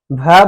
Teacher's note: भ बोलेंगे, थोड़ा सा लंबा सांस ले लेके बोलेंगे। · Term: महाप्राण